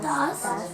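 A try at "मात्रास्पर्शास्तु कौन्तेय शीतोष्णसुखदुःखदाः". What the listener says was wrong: दा स है, दा एस कहाँ है? दास है ही नहीं। एस कहाँ है? एस है ही नहीं।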